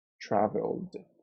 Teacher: the last consonant sound is L, and the L is a voiced consonant, so it means that it vibrates in the vocal cords